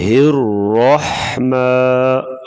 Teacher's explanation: را کے اوپر زبر ہوگی تو را کو پر پڑھا جاتا ہے موٹا